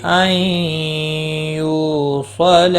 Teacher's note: نون ساکن کے بعد حروف یرملون کا یا آیا ہے، ادغام با غنہ ہوگا۔ یو واو مدہ ہے، ایک الف کے برابر کھینچ کر پڑھیں گے۔